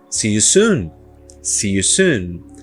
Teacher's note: toda vez que eu tenho vogais duplas sejam iguais como se e soon sejam diferentes como you esse som ele é mais longo